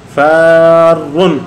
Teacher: حرف مد کے بعد جو ہے نا سکون آیا ہے وہاں تو مد سکون ہے تو مد لازم ہے